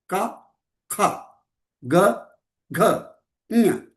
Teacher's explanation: हिंदी में कवर्गा का खा गा घा ङ, कवर्गा का खा गा घा ङ, कांठ्यम, कंठ से आता है। कवर्गा कंठ से आता है